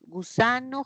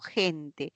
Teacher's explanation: tengo para una oclusiva y tengo para una fricativa